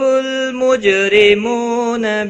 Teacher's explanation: یعرف، عین ساکن کو ہلانا نہیں، رو زبر کی وجہ سے پر پڑا جائے گا، لام ساکن کو ہلانا نہیں، مجھ، جیم ساکن پر قلقلہ ہوگا، رو زیر کی وجہ سے باریک پڑا جائے گا۔ مو واو مدہ ہے، 1 الف کے برابر کھینچ کر پڑھیں گے، نہ کو کھینچنا نہیں۔